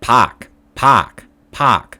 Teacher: if there's an a r sound it's not r but ah almost uh it's not a r but almost a h and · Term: how boston people say the ar sound